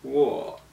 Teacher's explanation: it's pronounced in the third tone which means that your voice kind of starts in the middle of your register goes down and then goes back up